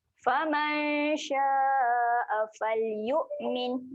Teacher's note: Sya ni kita akan panjangkan. Panjangkan bunyi dia sebanyak 4 harokat.